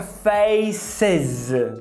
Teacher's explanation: como face acaba com s, que é uma sibilante, você vai adicionar o is. Então fica faces.